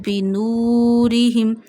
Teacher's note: When zamma come before waw sakina, you stretch waw up to one finger. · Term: waw madda